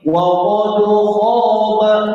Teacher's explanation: Jadi dal ini tipis diapit oleh huruf tebal. Nah, yang jadi keliru biasanya dalnya berubah menjadi tebal.